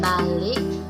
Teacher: kata balik diucapkan balik, vokal I diucapkan I rendah